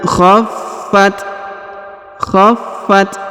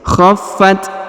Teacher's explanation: huruf ta berharakat sukun maka kita beri hembusan tipis